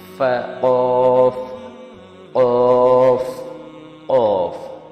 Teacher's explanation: یعنی یہاں پہ جو حلق کا جو حصہ ہے، اوپر والا جو حصہ ہے، وہاں سے ہم قوف کو ادا کرتے ہیں اور اس کا جو ساؤنڈ ہے وہ زبان کے پچھلے حصے کو سافٹ پیلیٹ کے ساتھ لگانے پر نکلتا ہے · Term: قاف